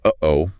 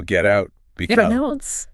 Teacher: you are abruptly blocking the airflow in your vocal cords, your glottis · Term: glottal stop